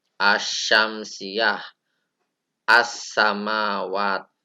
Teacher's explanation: ini alif lamnya tidak dibaca. Makanya langsung masuk pada huruf berikutnya. Itu dinamakan huruf syamsiyah. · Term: idgham syamsiyah